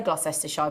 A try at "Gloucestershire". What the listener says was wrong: Put an extra syllable in.